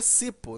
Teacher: Você vai saber que é necessário colocar o acento, até porque se eu tirar o acento de cipó, a palavra vira cipo, né? E aí já não é mais oxítona, e aí a pronúncia já modifica.